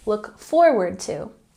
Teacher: we have the emphasis on the first syllable and forward